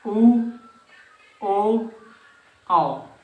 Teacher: व्रतमुखी मतलब जब हमारा ओठ एकदम गोला हो जाते हैं